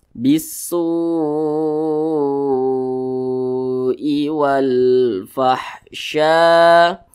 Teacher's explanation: Panjangnya itu 5 harakat atau kira-kira 5 ketukan. 1 2 3 4 5. Bisu'i wal fahsya. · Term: mad wajib muttasil